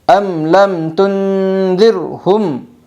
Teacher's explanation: میم ساکن کے بعد تا آئی ہے اس لیے میم ساکن کو ظاہر کر کے پڑھے گی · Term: اظہار شفوی